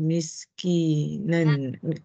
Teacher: Dia ada dua sifat daripada sin mati ya. Sofir, hamas.